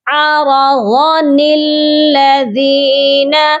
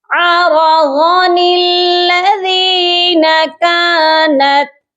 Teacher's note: اس نون کو ہم نے ڈائریکٹ لام مشدد کے ساتھ ملانا ہے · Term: نون قطنی